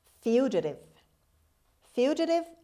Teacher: the stress is at the beginning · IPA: /ˈfjuːdʒətɪv/